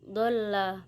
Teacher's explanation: Ayat ketujuh, dolla mat lazim musakol kilmi, cara membacanya panjang 6 harokat